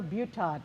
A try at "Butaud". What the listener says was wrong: No, that's pretty close. It's Butaud, the D silent.